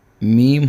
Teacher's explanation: تو با ہونٹوں کے تری والے حصے سے ادا ہوگا۔